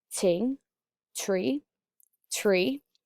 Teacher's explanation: the tongue touches the back of the upper teeth and hits the hard palate this gives the th a pop · can turn into a t the now say these words with the non-voiced th that sounds like a breathy tee